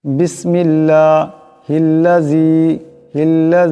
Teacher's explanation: আল্লাহ লামকে পাতলা করে পড়বেন